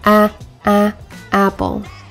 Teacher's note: The North American English ah, as in apple, for example, has a more front and low position in the mouth with unrounded lips and a rigid tongue